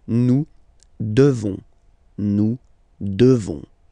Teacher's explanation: the S, final S, is not pronounced.